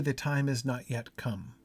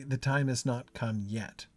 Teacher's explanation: If you say the time is not yet come, the emphasis is on come. If you say the time has not come yet, the emphasis is on yet.